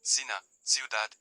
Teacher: Before e and i, it is pronounced like th in Spain, cena, ciudad, and like s in most Latin American countries.